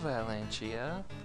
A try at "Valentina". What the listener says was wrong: Oh, there is an N at the end. It has to be Valentina. It has to be, with that N. Well, you're leaving off the N. Leaving off the second N. Valentina.